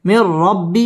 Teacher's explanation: ইদগামে বেলা গুন্না গুন্না ছাড়া মিলিয়ে পড়তে হবে